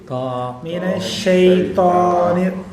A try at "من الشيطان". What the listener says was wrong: நாக்கு வெளியே வரக்கூடாது. மினஷ்ஷை தா தா தா தா தா தா. உதடு சுருங்குது. ஒரு அப்படி சுருங்கக்கூடாது. தா من الشيطان الرجيم نر نر نر نر را را را எப்படி ரா ரா சொல்கிறது உதடு சொல்லக்கூடாது, ஏன்னா உதடுக்கும் ராக்கும் சம்மந்தம் இல்லை. மினஷ்ஷைத்தானிர் ரஜீம் ரா ரா ரஜீம் எப்படி ஓது? நாக்கு வெளியே வருது, தால வந்துடக்கூடாது.